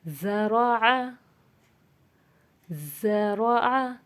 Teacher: ज़ सीटी की सी आवाज़ है और नरमी सी है